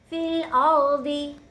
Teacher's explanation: यहाँ पे देखिए फ़ा को हमने लाम से मिलाना है, रॉ को मोटा पढ़ना है, रॉ साकिन से पहले ज़बर है तो रॉ को मोटा पढ़ेंगे